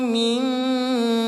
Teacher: mim bertasdid, hukum tajwidnya namanya gunnah. Bagaimana gunnah dibaca? Dengungkan 2 harokat.